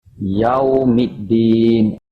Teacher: The lam is omitted, not pronounced. You jump over to the dal with the shadda. That's the purpose of hamzah wasal, to attract, to make it jump over to the next letter. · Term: Idgham syamsiyah